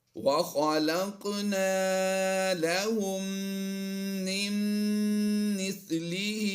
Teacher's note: قاف کی ادائیگی پوری بھی کرنی ہے اور ہم نے یہاں پر قلقلہ بھی کرنا ہے، وَخَلَقْنَا لَهُم مِّن مِّثْلِهِ۔